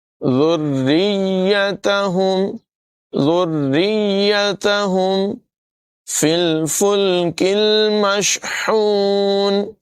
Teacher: کاف کی آواز باریک ہوگی، ہا کو نمایاں کریں گے